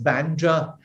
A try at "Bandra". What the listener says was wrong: It's not Bandra, first of all, it's Bandra. There is no A. There's no second A in Bandra. There's just Bandra.